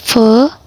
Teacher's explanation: cara pelafalannya bibir bawah dan gigi atas, sama seperti kita membaca f.